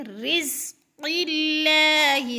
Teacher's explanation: مر، را کو تھوڑا سا سختی سے پڑھیں گے، رزق اللہ، زا کو سیٹی کی آواز میں سختی سے ، اللہ، قاف موٹے حروف میں سے اور اللہ باریک پڑھا